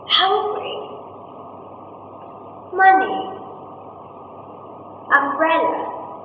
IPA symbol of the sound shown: ʌ